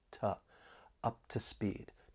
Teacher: that weak, unstressed to, because when it's unstressed, it may sound a bit more like it has that schwa sound